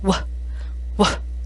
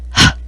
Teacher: the W sound has throat vibration the H sound does not